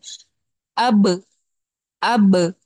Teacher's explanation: आपने होठों को टच किया बा को अदा करने के लिए, और फौरन से अलहदा कर दिया, एकदम से अदा करके फौरन अलग कर लिया, जिससे वो बाउंसिंग साउंड आ रही है। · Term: कलकला